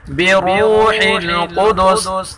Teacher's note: را کو پر پڑھیں گے اور قاف کو بھی پر پڑھیں گے